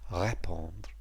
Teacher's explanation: And notice, by the way, there's an acute over the E, so that first syllable, ré, is stressed, répondre. The stem is RE acute POND.